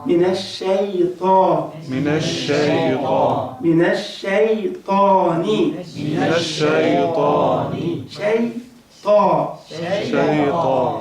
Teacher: الشين مرققة، الياء هنا برضه ترقيق، الطاء مفخمة، فنقول شيطان مش شيطان.